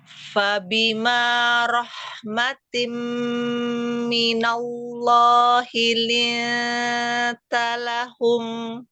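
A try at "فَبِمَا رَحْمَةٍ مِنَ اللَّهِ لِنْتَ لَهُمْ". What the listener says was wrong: Ya, lafzul jalalanya tebalkan lagi. Minallah.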